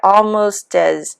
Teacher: and the t links to the a